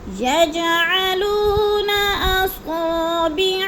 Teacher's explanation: یج کی جیم پر قلقلہ ہے، تھوڑا سا ہلا کے پڑھنا ہے، اور لو کو ہم نے کھینچنا ہے، وہ مدہ ہے۔